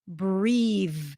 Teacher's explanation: The E at the end suggests that actually the vowel before is a tense E sound.